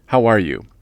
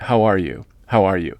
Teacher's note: Do you notice I'm not raising my voice in the form of a question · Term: flat intonation